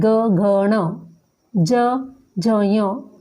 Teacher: इसके बाद है सघोष व्यंजन। जिन व्यंजनों के उच्चारण करते समय स्वर तंत्रियों में कंपन होता है वो सघोष व्यंजन कहलाते हैं।